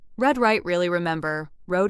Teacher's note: To make the American r, your tongue does not touch the roof of your mouth the same way it might in other languages. Instead, the tongue pulls back a little and the sound becomes rounded and smooth.